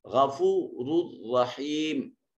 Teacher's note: را مضموم ہے اور اس کو مفخم ادا کریں گے · اور یہاں اس پہلی را کے اوپر تنوین ہے، اور اس تنوین کو، نون تنوین کو جر ملون میں سے را میں ادغام کریں گے، اور ادغام بغیر غنہ کے ہوگا، اور جب ادغام بغیر غنہ کے ہو تو اس کو ادغام تام کہتے ہیں، کہ پچھلے حرف کو ملاتے ہوئے دوسرے حرف میں اس وقت اس کی صفت باقی نہیں رہتی۔ · یہ را مفتوح ہے، اس کو بھی مفخم ادا کریں گے، موٹا اور پر کر کے پڑھیں گے